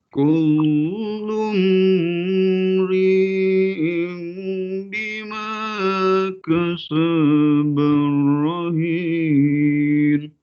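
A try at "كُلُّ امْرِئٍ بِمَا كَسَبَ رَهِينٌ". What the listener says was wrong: Pertama, mim mati ketemu dengan ro. Mim mati ketemu dengan ro. Ini izhar syafawi, jangan ditahan. Jangan ditahan.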